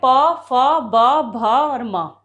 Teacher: प वर्ग जो कि ओंठ की मदद से बोले जा रहे हैं